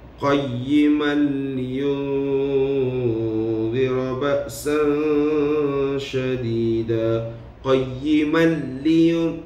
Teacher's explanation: Maka kita baca dalam keadaan terus memasukkan ke huruf yang seterusnya, selepasnya, tanpa dengung. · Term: idgham tanpa dengung